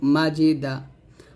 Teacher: মাঝি দাল জবর দা মাজিদা এখানে জিমের উচ্চারণটা আমরা যখন করব জিহিবাটা আমরা কোনভাবে দাঁতে লাগাবো না জিহিবার মধ্যখান উপর তালের সঙ্গে লাগিয়ে জিমের উচ্চারণ করব